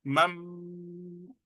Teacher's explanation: The noon sakin will change into mim and do ghunna. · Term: iqlab